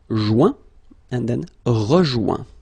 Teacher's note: when you get this O-I-N combination of letters, you get the sound ouin.